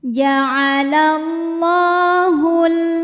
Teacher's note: lam dipanjangkan 2 harokat saja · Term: mad tabi'i muqaddar